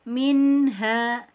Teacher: ada sedikit aliran suara yang ke hidung karena dia mempunyai sifat hunnah